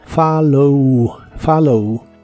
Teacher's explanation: la primera o se pronuncia como a y la doble l se pronuncian como una l normal